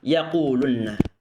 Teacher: Nun pertama yang sukun diidghamkan dalam huruf nun yang kedua yang berharokat, sehingga menjadi satu huruf nun yang bertasydid.